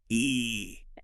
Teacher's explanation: Produce a really tense, high E sound.